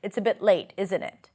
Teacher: It's not open for discussion, really, when I use this falling intonation.